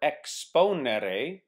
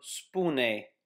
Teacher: initial vowels in Latin can disappear in Romanian. For instance, the Latin verb exponere, to expound, becomes the Romanian verb spune, to say.